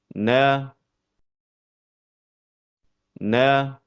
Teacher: Huruf nun keluar dari pertemuan antara ujung lidah dengan gusi bagian atas